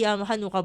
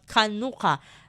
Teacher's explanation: the Hebrew word is actually pronounced with a guttural ka sound. So it's not actually Hanukkah but Kanuka.